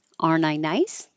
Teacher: you can drop the T because it's coming after the N.